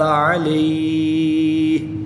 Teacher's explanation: حروف لین کے بعد یہاں پر سکون عارضی آ گیا ہے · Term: مد لین عارض